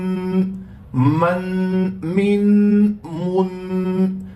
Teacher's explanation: آپ دیکھ رہے ہیں کہ تنوین پڑھتے وقت ناک میں آواز جا رہی ہے